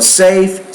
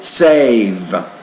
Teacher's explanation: precedes it as longer so safe save so you want to change the duration I think of the vowel sound before the V make it a little bit longer